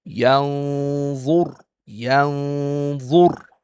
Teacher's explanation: we have to hide the noon and do ghunnah for two beats